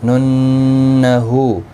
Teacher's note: ننہو نون مشدد پر غنہ ہوگا. ہا کے اوپر الٹا پیش ہے، ایک الف کی مقدار کے برابر کھینچ کر پڑھیں گے.